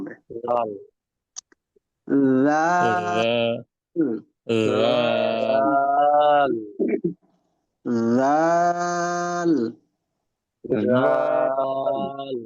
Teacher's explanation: জিহ্বার মাথা আর সামনের উপরের দুই দাঁতের মাথা শুধু দাঁতের সাথে লাগাইয়া বললে হবে না দাঁতের আগার সাথে লাগাইয়া